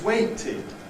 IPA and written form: ˈweɪtɪd (waited)